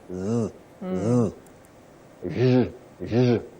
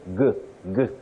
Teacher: a sound that as you produce it if you happen to hold this part of your neck that is the front part of your neck you'll feel some vibration of the vocal chords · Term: voiced sound